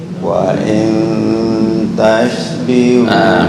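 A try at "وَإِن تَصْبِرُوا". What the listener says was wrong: Bukan tash. So, bukan tash. Seperti sin biasa, cuma lidah naik ke atas atau yang disebut dengan isti'ala. Wa in tasbiru. Oke, buka makhraj dulu nih. Di mana shad? Ujung lidah bertemu dengan gigi seri bawah.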